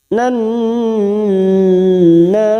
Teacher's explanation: kita tahan selama 3 harakat karena terdapat nun yang bertasdid. Ada hukum bacaan gunna musaddadah, kita tahan selama 3 harakat.